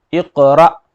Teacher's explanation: حمزہ ساکنہ آ رہا جھٹکا دیں گے